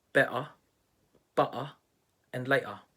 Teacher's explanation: in this accent the t sound is replaced by a glottal stop